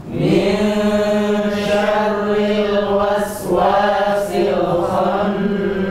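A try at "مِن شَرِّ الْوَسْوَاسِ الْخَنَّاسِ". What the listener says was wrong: Tip, jangan lupa ya, ikhfa, bersiap-siap ke makhraj huruf setelahnya, shin. Jadi jangan ming, tapi min syarri, dan ro-nya tipis. Syarri dibaca dengan tipis. Min syarril waswasil khannas.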